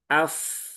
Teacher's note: Huruf fa itu ada di bibir ya, bibir ya, di dua gigi seri atas bertemu dengan bibir bawah di sini.